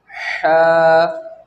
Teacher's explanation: यानी हलक के बीच के हिस्से से हा अदा होता है। हा, ये देखें आप, बीच का हिस्सा जो है हलक का, जहाँ पे ये निशान बना है तो इस हिस्से से ह अदा होता है।